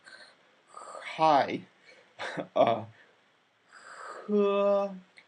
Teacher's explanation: it's not quite as constricted as in Arabic for example where you really have throat constriction just softly constricted